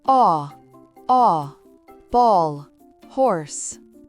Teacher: Enfin, le son O, c'est un O. long et arrondi comme dans le mot door